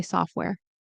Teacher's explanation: I just noticed that I didn't pronounce the T.